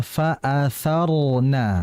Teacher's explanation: Nah, itu kan ada getaran ro ya. Dan kondisi ro di sini tebal